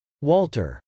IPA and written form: wˈɔːltɚ (walter)